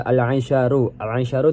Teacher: Al-aisyaru dibaca alif lam qamariyah karena lam dibaca jelas karena bertemu dengan huruf qamariyah yaitu ain